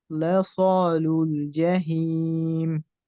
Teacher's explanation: লাম যেন মোটা না হয়ে যায়